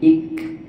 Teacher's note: Kaf itu adalah hams ya, al hams bunyi bisikan angin.